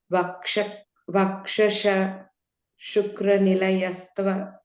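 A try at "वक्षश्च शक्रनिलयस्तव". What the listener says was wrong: Again, in the last line you're saying Shukra. Vakshascha Shakranilaya.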